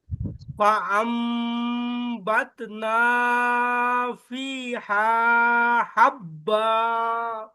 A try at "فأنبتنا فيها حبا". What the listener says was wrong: ফিটা টান হবে হাটাও একটু টান হবে ফিহা বলেন